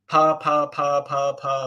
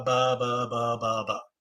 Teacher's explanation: the difference between a p and a b is the interval of time between the popping of the lips and the onset of vocalization